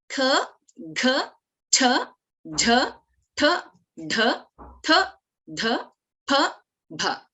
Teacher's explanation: So we take more effort, more breath to pronounce, more air to pronounce these letters. So they're called as Mahapranakshārani. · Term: maha pranaksharani